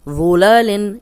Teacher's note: اس میں صرف ذو کی پریکٹس کریں، موٹا بھی ہے، نرم بھی ہے، سیٹی کی آواز نہیں آئے گی